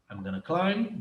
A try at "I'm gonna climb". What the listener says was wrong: Você falou I, aí você fugiu o M. O M você tem que fechar a boca quando você pronuncia isso. Vai fazer assim, ó. I'm. Não I. Você tem que fechar a boca. I'm.